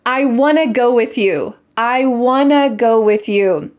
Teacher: The words want and to become wanna.